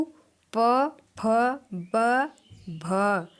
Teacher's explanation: प फ ब भ ये आते हैं ओष में इनका उच्चारण स्थान ओष से होता है